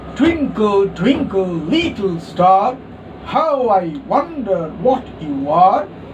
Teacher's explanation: stressed, unstressed, stressed, unstressed, stressed, unstressed, and then the final foot is incomplete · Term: trochaic